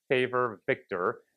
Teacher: Your lower lip curls in a little bit and your teeth come down.